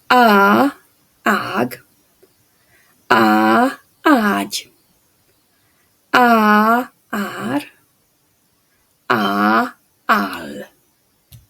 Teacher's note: the Hungarian a sound is an open unrounded vowel that is created in a low jaw and Tong position the